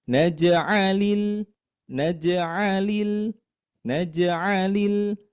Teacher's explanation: Kemudian di lil ini kita suaranya dinaikkan.